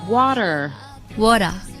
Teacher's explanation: T will often be realized as a voiced articulation between vowels.